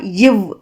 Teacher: மேல்வாய்ப்பல்லை கீழ் உதடு பொருந்துவதால் வந்து பிறப்பது தான் இவ்